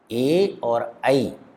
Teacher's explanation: ए और ऐ इनका उच्चारण स्थान कंठ और तालु दोनों होता है, इसलिए ए और ऐ इन वर्णों को हम कंठ तालव्य भी कहेंगे।